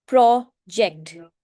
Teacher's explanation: प्रोजेक्ट में आप प्रो को स्ट्रेस देकर बोलेंगे